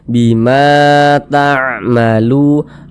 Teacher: huruf yang memiliki harakat fathah ini dibaca panjang sehingganya Ma dibaca panjang · Sehingganya lu dibaca panjang, mad tabi'i panjang 2 harokat. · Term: Mad thi'i